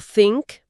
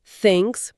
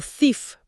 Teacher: al pasar por ese túnel super estrecho entre la lengua y los dientes, se crea una turbulencia acústica, una fricción limpia y las cuerdas vocales que están más abajo en la laringe permanecen completamente abiertas y relajadas, o sea, no participan para nada. · th sorda, es que no hay voz, cero voz. Es puro flujo de aire.